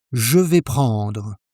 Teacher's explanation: Flat tone, decided, no upward lift at the end. Most learners turn it into a question without realizing it.